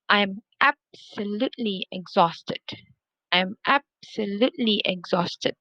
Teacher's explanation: So you can see I stress the first syllable, absolutely, and then exhausted, exhaust. I stress the second syllable. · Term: stress both